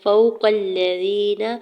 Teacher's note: فوق الذین، واو ساکن سے پہلے فا کے اوپر زبر ہے، واو لین ہو رہا ہے، نرمی سے موڑتے ہوئے ادا کرنا ہے، کھینچنا نہیں ہے زیادہ